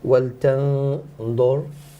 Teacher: the noon, make it full mouth because the letter comes after it's heavy.